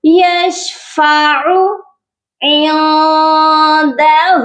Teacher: کے اوپر صرف حرکت ہے، سمپل حرکت ہے پیش کی، تو سادہ حرکت کو زبر زیر پیش کو کبھی بھی کھینچ کر نہیں پڑھا جاتا، تو ہم نے عین کو نہیں کھینچنا ہے